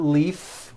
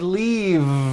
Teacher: it's not leaf with an unvoiced f I should have said leave with a voiced V sound